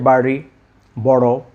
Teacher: একটু মুখের ভিতরে ড এবং র এর মাঝামাঝি উচ্চারণ করতে হবে।